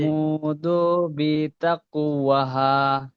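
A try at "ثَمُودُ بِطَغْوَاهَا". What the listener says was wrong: এখানে দালটা টান হয়ে যাচ্ছে। কাযযাবাত সামুদু বিতগওয়াহা। বিতগওয়াহা। এখানে এখানে কি কায়দা হবে বলুন তো ভাই, ও সাকিনের ডান দিকে পেশ এসছে। জি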